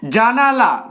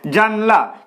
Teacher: ন এর পরে যে আ টা রয়েছে সেটা লুপ্ত হয়ে যাচ্ছে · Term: মধ্যস্লোপ